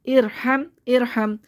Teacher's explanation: حمزہ را کے نیچے سے پہلے زیر ہے تو اس را کو باریک پڑھیں گے